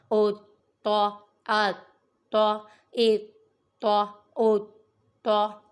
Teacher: یہ تو حروف قلقلہ میں سے ہے اور یہاں پر تشدید بھی آ رہی ہے، تو کے اوپر مشدد ہو رہا ہے، اس لیے اسے جماؤں کے ساتھ پڑھیں گے